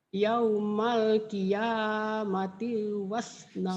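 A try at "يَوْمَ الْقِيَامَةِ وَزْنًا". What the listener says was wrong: Jangan yaumal qiyamati, tinya pendek. Yaumal qiyamati wa, mati wa, mati wa. Jadi Quran itu kadang-kadang gitu tuh. Jadi dari satu huruf ke huruf lain agak nyambung.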